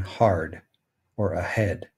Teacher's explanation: And finally, the glottal fricative, as we've said, is H as in hard or ahead. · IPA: /h/